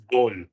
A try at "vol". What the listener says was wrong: Vol, well done.